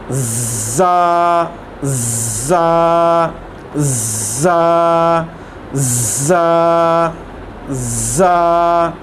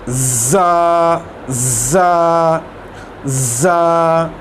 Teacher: ये जो हमारी ज़बान की जो टिप है वो दांतों की पिछली साइड पे लगी और यहाँ सीटी की आवाज़ निकलेगी। सीटी की आवाज़ इस तरह की सीटी की आवाज़ होती है, ज़ा ज़ा ज़ा।